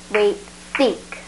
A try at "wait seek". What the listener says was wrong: No, your tongue came out on that one. Let's try it again.